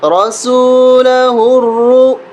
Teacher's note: لقد صدق اللہ، را زبر را سین واپس سو، رسو، لام زبر لا، رسول، ہا را پیش ہر، را حمزہ پیش رو، یہ را موٹا ہوگا اور اس کو را کو موٹا کرنے کے ساتھ ساتھ حمزہ کے ساتھ ملائیں گے۔